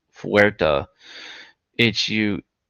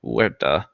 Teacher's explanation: H is usually silent in Spanish